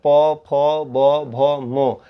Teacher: इन सभी का उच्चारण ओठ से होता है, इसलिए इन्हें ओष्ठ्य वर्ण भी कहते हैं।